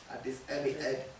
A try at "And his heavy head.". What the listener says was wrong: You want that last line to be louder. Can you say that last line loud? And his heavy, head.